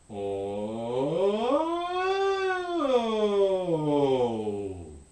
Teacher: go from super low pitch to super high pitch and back down again